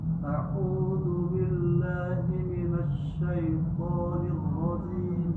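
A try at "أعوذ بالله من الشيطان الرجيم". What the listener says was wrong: Huruf la tipis ya, la. Jadi harus keluar lidahnya. Kalau belum keluar lidahnya belum tepat. La li lu. A'udzu billahi minasy syaithanir rajim. Nirro tidak pecah. Nirrojim.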